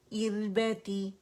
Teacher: ار ار آر ار باریک، را باریک ہوگی، تقریر مقدار کم ہوگی